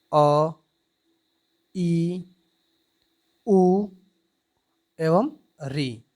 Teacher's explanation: ह्रस्व स्वर को हम मूल स्वर भी कहते हैं और ये एक मात्रिक होते हैं तथा इनके उच्चारण में दीर्घ स्वर की अपेक्षा आधा समय लगता है